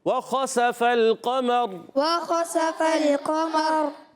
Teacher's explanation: واو کی ادائیگی ہونٹوں کی گولائی سے · خا کا مخرج حلق کا اوپر والا حصہ ہے، حرف حلقیہ میں سے بھی ہے